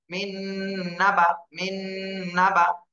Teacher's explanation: চারটি হরফ, ইয়া, ওয়াও, মিম, নুন, এই চারটা ঈদগামে বা গুন্না। তাহলে নুন সাকিনের পরে এই যে নুন, ইয়া, ওয়াও, মিম, নুন, ঈদগামে বা গুন্নার হরফ এসেছে, এজন্য গুন্না সহ মিলাবো।